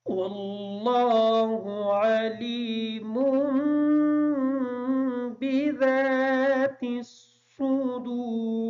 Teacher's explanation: بذات الصدور کا جو ذال ہے اس ذال کو نرمی کے ساتھ ادا کریں گے، سواد کو اس طریقے سے ادا کریں گے کہ سین کی آواز ادا نہ ہو. واللہ علیم بذات الصدور.